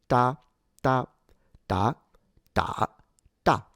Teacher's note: Uh but in reality to the Chinese, this is more of a nonaspirated T